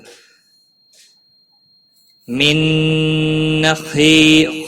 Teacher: خا حروف مستعلیہ میں سے پر پڑھا جائے گا، خی یا مدہ ہے، ایک الف کے برابر کھینچ کر پڑھیں گے۔